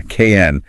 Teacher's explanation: The vowel practically ceases to exist.